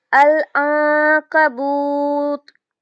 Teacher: واو مدہ ہے تو اس کو ہم 2 حرکت کریں گے اور آگے بھی جزم کے ساتھ پڑھیں گے تو یہاں پر مدارس للسکون کی طرح پڑھا جائے گا۔